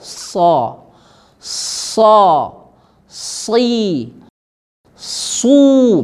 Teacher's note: makhrajnya tempat keluarnya di lidah jadi antara lidah dengan gigi seri bawah saja bibir tidak usah ikut-ikut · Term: Shad